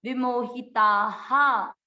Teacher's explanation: विसर्ग है, मात्रा किसकी है, ताकि, विसर्ग को पढ़ेंगे हा, विमोहिता हा।